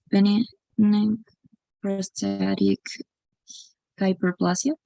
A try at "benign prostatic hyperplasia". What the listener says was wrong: Perfect, benign prostatic hyperplasia, okay.